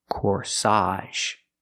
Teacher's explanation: the AGE makes the AHZH sound here